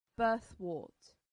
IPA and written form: ˈbɜːθˌwɜːt (birthwort)